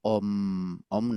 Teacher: la a y la u forman un diptongo que son parecidos los estados y ese diptongo suena como aproximadamente como la letra o